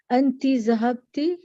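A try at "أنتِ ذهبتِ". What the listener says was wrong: Excellent.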